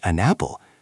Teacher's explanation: The n sound at the end of an hooks on to the a at the start of apple.